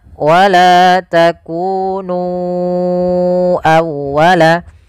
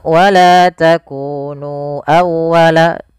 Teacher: maka kita harus memanjangkan nunya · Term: Mad Jais munfasil